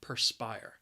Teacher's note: the word has two syllables and the stress is on that second syllable